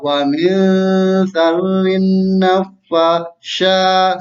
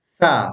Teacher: Jadi di ujung lidah dirapatkan dengan gigi atas atau dibaca sa.